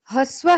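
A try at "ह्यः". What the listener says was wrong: Hyaha. Not Hrsva. Hyaha. Hakara halant yakara joined. Hya with a visarga. Hyaha.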